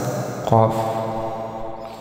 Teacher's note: Kemudian huruf qaf ini mempunyai sifat istilah. Ini tempat keluarnya pada pangkal lidah, itu diangkat ke atas